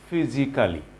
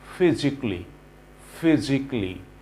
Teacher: কালি না বলে সেটাকে ক্লি বলতে হবে